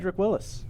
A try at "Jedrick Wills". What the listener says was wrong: Yeah, it's Wills, not Willis.